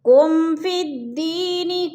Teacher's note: میم ساکن کے بعد فا گئے تو ادھر اظہار شفی، غنہ نہیں کریں گے۔ فی الدین، دی پہ یا مدہ، یا ساکن سے پہلے دال کے نیچے زیر ہے تو یا مدہ ہو رہا ہے۔